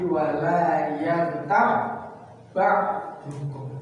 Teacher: Ba ketemu ba, bukan kol-kolah lagi. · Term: idgham mutamatsilan